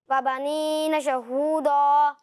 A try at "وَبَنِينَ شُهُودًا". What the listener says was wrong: دیکھیں, یہاں پر آپ نے دو غلطیاں کی کہ یہاں شین پر لکھا ہوا ہے پیش. پیش ہے, شہو. ٹھیک ہے, کہ شہو نہیں ہے, آپ نے اسے شہو پڑھا. اور دوسری بات یہی کہ یہاں دال لکھا ہوا ہے, ضاد نہیں لکھا ہوا, آپ نے اس کو پر پڑھا ہے, اسے پر نہیں پڑھیں گے, اسے باریک پڑھیں گے, پر نہیں پڑھنا.